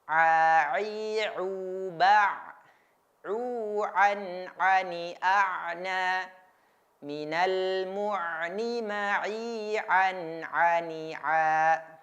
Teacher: Makhraj atau tempat keluar daripada huruf Ain itu berada di tenggorokan atau al-halqu.